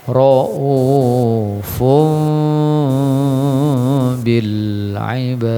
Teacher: Wallahu, ra'u juga hamzah, ra'u dua harokat, fun ya, ada kodenya mim kecil dibalik tanwin, dibalik menjadi mim, ra'ufum ya, kemudian ditahan dua harokat, ra'ufum bil ibad, qalqalah kubro sama ya, jadi 2 kali qalqalah kubro pada ujung ayat ya